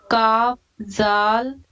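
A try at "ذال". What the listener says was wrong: جیسے سا کو پڑھ رہی ہیں نا باریک، یہ جو سا ہے ایسے زال کو بھی ویسی باریک پڑھیے،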